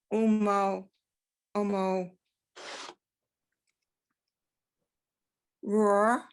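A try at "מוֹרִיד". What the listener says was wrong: That's mo read. So the first one's a resh, the second one's a dalet. Mo read.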